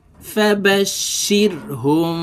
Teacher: এই মিমকে দুই ঠোঁটের মাঝে সুতা পরিমাণ ফাঁকা রেখে উচ্চারণ করব এবং গুন্নার সহিত পড়বো